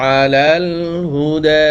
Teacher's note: মিলিয়ে যাই এখানে না থেমে তাহলে এখানে তিন আলিফ টান হবে এই যে মদের হরকতের পরে হামজা আসছে এজন্য তিন আলিফ টান হবে